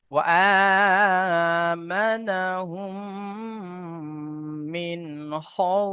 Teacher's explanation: নুন সাকিনের আওয়াজকে বিনা গুণনা জাহির করে তাড়াতাড়ি পড়তে হবে, একে ইজহারে হালকি বলা হয়।